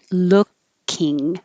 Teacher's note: the vowel here is uh like took so don't round your lips it'll sound like looking so look keep your lips straight looking